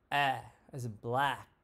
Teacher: it's the front lowest vowel so your tongue rests at the bottom of the front of your mouth we say with an open mouth so we can get that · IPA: /æ/